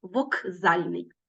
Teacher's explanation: звук к перед наступним дзвінким приголосним вимовляється як ґ Вокзальний ми пишемо звук к але чуємо як Ґ Вокзальний ось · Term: уподібнення